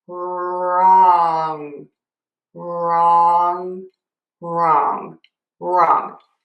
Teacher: Pro tip here, we don't say a w. It's just an r. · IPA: /rɔŋ/